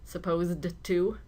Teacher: It's difficult to hear this because the D and the T sounds blend together, supposed to.